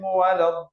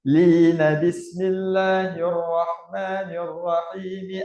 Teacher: Lin tak ada panjang lah. Lin dua harakat je.